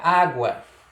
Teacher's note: ditongo crescente também, porque é o encontro da semivogal com a vogal